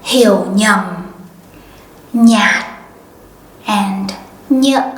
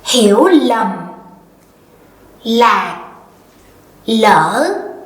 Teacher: in the north, these words start with a consonant ñ, nh, right?